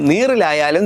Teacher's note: മേൽവരിപ്പല്ലിന്റെ പിന്നിലെ ഊനിൽ നാക്കിന്റെ അറ്റം നിർത്താതെ തൊട്ടും വിട്ടും ഉച്ചരിക്കുമ്പോൾ കിട്ടുന്നതാണ് കമ്പിത ധ്വനിയുള്ള റാ. നാക്ക് തൊടുന്നതിന്റെ ആവർത്തനമില്ലെങ്കിൽ അത് ഇറ്റ എന്നാകും.